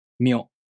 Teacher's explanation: To pronounce Myo, the tongue moves from the [mʲ] consonant to the [o] vowel.